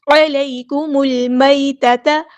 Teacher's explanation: عین کو وسطی ہے لیکن مڈل تھروٹ سے ادا کریں گے